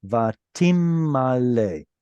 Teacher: Instead of vatin male with a noon in the middle there, the noon assimilated into the next letter.